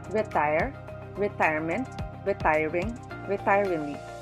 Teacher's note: all four words have the stress in the second syllable